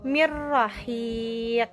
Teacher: Jadi nunnya dilebur. ro-nya jelas. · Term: idgham tanpa gunah